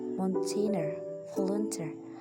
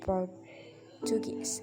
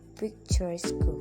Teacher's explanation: the main stress is on the first syllable of the suffix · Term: primary stress